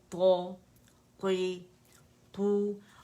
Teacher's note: پیچھے سے زبان کی جڑ اٹھے گی، تو بیچ میں پیالہ خود بخود ڈپ بنے گا، تو اس سے ہم آواز اوپر پھینکتے ہیں